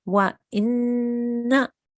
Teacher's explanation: What I was noticing a little bit on that one is that you were making sounds longer than they needed to be. So here we hold on the nasal sound, but we still only pronounce the fatha for 1 second.